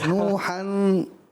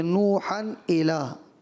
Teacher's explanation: تنوین کے بعد حرف حلقی میں سے حمزہ آ رہا ہے، یہاں اظہار کرنا تھا، آپ نے یہاں غنہ کر دیا